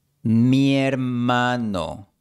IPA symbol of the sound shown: je